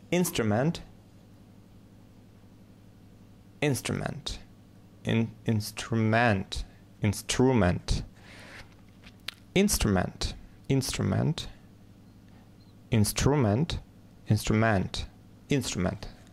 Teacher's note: ударение на первый слог